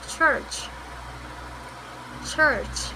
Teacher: The CH sound is a combination of the J sound and the SH sound.